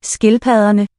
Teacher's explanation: Double D is the fricative